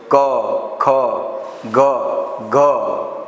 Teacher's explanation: આ પ્રકારના જે વ્યંજનો જે છે ગળામાંથી બોલાય છે માટે તેને કંઠ્ય વ્યંજન કહેવામાં આવે છે